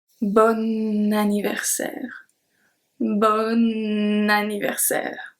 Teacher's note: The pronunciation is exactly the same for both, and that's because of the link. So bon ends with a consonant. Anniversaire starts with a vowel. So when we pronounce it, we have to make the link.